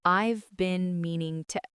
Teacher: Notice how native speakers do not pronounce every single word with equal weight. The word been shrinks down.